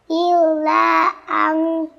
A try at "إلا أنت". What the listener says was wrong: এখানে ইল্লা আংটা অক্ফ করার কারণে আংত বলে থামতে হবে, লাস্টে তাটা হালকা উচ্চারণ করতে হবে, ইল্লা আংত, ইল্লা আংত,